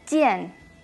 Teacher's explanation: ch sin tanto aire